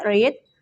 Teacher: voice palato alveolar approximant sound R